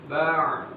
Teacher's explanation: Ba, ya, tidak terangkat naik pada bagian pangkal lidahnya. Kemudian dia punya sifat infitah, ya, merenggang antara lidah dengan langit-langit.